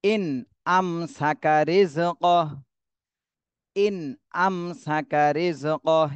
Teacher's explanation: নুন সাকিনের পরে হামজা এই ইজহারের হরফ আসছে এজন্য এই নুন সাকিনে স্পষ্ট করে পড়তে হবে